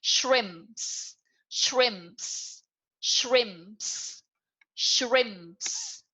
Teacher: So if there are more than one shrimp, you have to add an s at the end, which is shrimps. Okay, so when you add an s at the end, you wouldn't release p, but you release ps.